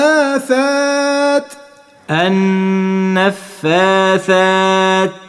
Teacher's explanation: الثاء نخرج فيها طرف اللسان مع اطراف الثنايا اللي هم السنتين اللي فوق